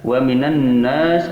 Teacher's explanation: alif lamnya alif lam samsiyah yang wajib idgham, dalam arti lamnya tidak dibaca langsung ke nun